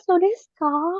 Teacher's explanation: Ekspresi ini digunakan untuk menyatakan telah mengerti, diucapkan dengan intonasi menurun.